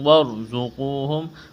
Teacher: را ساکن سے پہلے زبر ہے، را کو موٹا کریں گے، زا میں سیٹی کی آواز پیدا کریں گے.